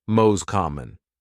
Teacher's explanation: Instead of pronouncing the T clearly, you'd hear mos common. The T disappears, and the words are linked.